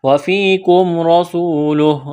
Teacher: را کو موٹا کرنا ہے، سین میں سیٹی کی آواز پیدا کریں گے. واو مدہ ہے، واو ساکن سے پہلے پیش ہے، ایک الف کے برابر کھینچنا ہے.